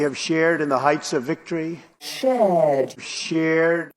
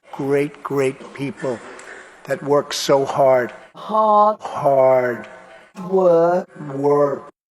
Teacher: most brits will not pronounce the r sound but most americans will